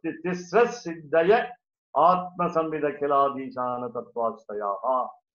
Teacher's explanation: Now it is in conjunction. Therefore, there is no visarga. Visarga is dropped there. So, tisras siddhaya atma samvida khiladishana tattvasthayaha is one continuous reading. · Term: sandhi